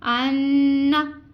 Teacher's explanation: ناک میں آواز لے جانی ہے اور اس کو ٹھہرائے رکھنا ہے. انا, ایسے ہم نے اس کی ادائیگی کرنی ہے. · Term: غنہ